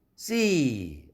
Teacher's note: 그런데 seeing, ing가 붙으면 또 하나의 음절 ing이라는 음절이 왔죠. 이렇게 비교할 때 see 아무것도 뒤에 음절이 또 하나가 없을 경우가 길어지죠